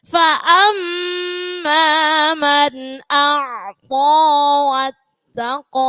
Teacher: Ta huruf tipis, qafnya huruf tebal.